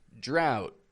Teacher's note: The T can be made into a stop T. Drought. Not even released.